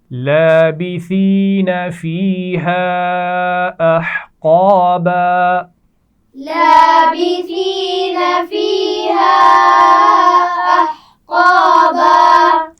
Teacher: سا کے مخرج کا خیال رکھیے، نرمی سے پڑھا جاتا ہے. اس میں سین کی طرح سیٹی نہیں ہونی چاہیے. فیہا یا مدہ ہے اور الف مدہ بھی ہے، اور چھوٹی مد ہے تو اس کو ہم کھینچ کر پڑھیں گے.